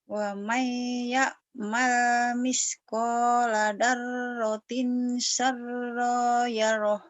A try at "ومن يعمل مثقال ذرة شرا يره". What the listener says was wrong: Syarrai yarah kurang nyamber. Ayo.